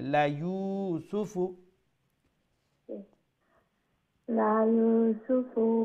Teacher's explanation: মাদ্দা তো ওয়াও মাদ্দা কি করবে তার আগে যে পেশটা আছে পেশের সাউন্ডটা যেটা খাটো ছিল সেটাকে এক আলিফ লম্বা করে দিবে